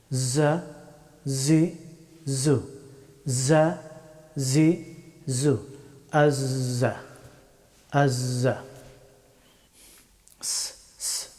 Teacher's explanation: জাই হরফটি উচ্চারিত হয় জিহ্বার অগ্রভাগ এবং উপরের এবং নিচের সামনের দুই দাঁতের মধ্যখান দিয়ে এই হরফটি উচ্চারিত হয়